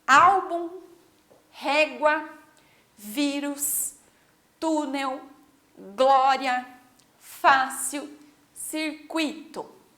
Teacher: algumas palavras têm 2 sílabas, algumas têm 3 sílabas e mesmo assim essa sílaba tônica fica na penúltima. Ah, mas aqui é a primeira, mas lembrem que nós vamos sempre olhar de trás para frente, ok?